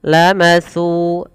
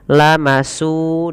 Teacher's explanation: hati-hati di dalam melafalkan huruf sa tidak boleh kita mengganti jadi huruf sin. Terdengar bunyinya lamasu dengan s.